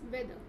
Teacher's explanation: The last R is not pronounced.